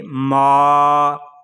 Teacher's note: نون زبر نا، عابدون، میم الف زبر ما، اس کو ما نہیں پڑھیں گے، اس کو پڑھیں گے ما، جس طرح کلمہ ہے مال، مال کی میم کو ہم ادا کرتے ہیں تو ناک میں آواز نہیں جاتی